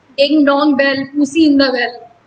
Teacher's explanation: तो डिंग unstressed, डोंग stressed, in unstressed, the stressed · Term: आइम्बिक फीट